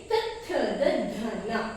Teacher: ತ ಥ ದ ಧ ನ, ಇವನ್ನ ಹಲ್ಲುಗಳ ಸಹಾಯ ಅಂದ್ರೆ ಮುಂದಿನ 4 ಹಲ್ಲುಗಳ ಸಹಾಯದಿಂದ ಇವನ್ನ ಉಚ್ಚರಿಸ್ತಾ ಹೋಗ್ತೀವಿ. ಹಾಗಾಗಿ ಇವನ್ನ ನಾವು ದಂತ್ಯಾಕ್ಷರ ಅಂತ ಹೇಳ್ಬಿಟ್ಟು ಕರಿತೀವಿ. · ಮುಂದಿನ ಹಲ್ಲುಗಳು ನಾಲ್ಕು ಹಲ್ಲುಗಳ ಸಹಾಯದಿಂದ ಇವನ್ನ ಉಚ್ಚರಿಸ್ತಾ ಹೋಗ್ತೀವಿ